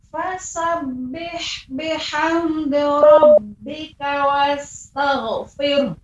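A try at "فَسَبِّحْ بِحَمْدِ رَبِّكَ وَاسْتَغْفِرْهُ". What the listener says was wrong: Nah, ini huruf gha-nya Ibu terdengar lagi wastagh. Tidak boleh wastagh. Akan tapi pengucapan gha tadi yang sudah kita praktekkan al, berarti pengucapannya wastagh. Kemudian pengucapan ujungnya hanya diberikan fir. Nah, begitu saja tanpa ada hanya.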